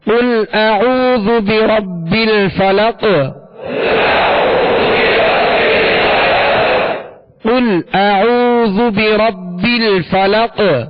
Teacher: وقف کی صورت میں یہ ساکن ہوگا اور اس پر قلقلہ ہوگا، یعنی آواز میں جنبش ہوگی، آواز لوٹتی ہوئی آئے گی